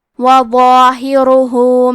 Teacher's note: کلمت ظاہرہ میں وہ کو اور اس کے بعد مد الف کو دونوں حرف کو تفخیم سے ادا کرنا ہے · حرف را کو موٹی آواز میں پڑھیں گے کیونکہ اس پہ پیش ہے